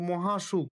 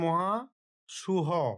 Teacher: খ মহাপ্রাণ ধ্বনি দুর্বল হয়ে অল্পপ্রাণ ঘোষ ধ্বনি হতে রূপান্তরিত হচ্ছে · দুটি স্বরধ্বনির মাঝে অবস্থিত মহাপ্রাণ ধ্বনিগুলির উচ্চারণের সময় দুর্বল হয়ে পড়ে এবং উচ্চারণের সুবিধার জন্য সেই স্থানে অল্পপ্রাণ ঘোষধ্বনি হয়ের আগমন ঘটে। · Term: মহাপ্রাণতা হ্রাস